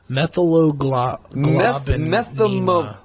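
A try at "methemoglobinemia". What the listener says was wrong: Methymoglobinemia. Globinemia. Oh, gobinemia.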